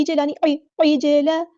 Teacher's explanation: عین کو وسطی حلق میڈل تھروٹ سے ادا کرنا ہے